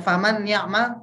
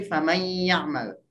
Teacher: Man ketemu ya jadi may. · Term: Idgham bi gunnah